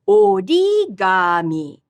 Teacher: pitch low at the start, rising in the middle, and then low again at the end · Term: third pitch pattern